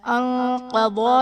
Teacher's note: قاف اور ضاد حروف مستعلیہ ہیں، انہیں ہم پر کر کے پڑھیں گے